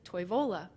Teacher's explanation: Toivola is closer to Finnish. Finnish stresses the first syllable of every word. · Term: stress first syllable